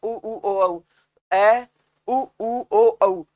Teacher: लेकिन जैसे ए के बाद बोलो आप उ ओ औ, ए उ ओ औ, तो जीभ गोल होके गले की तरफ चली जाएगी, यानी पीछे खिसक जाएगी। तो ये उ ओ औ जो है ये 4 पश्च स्वर होते हैं। · इनके अंदर होंठ वृत्ताकार होते हैं ना, तो आपकी जीभ जो है वो पीछे खिसकती है।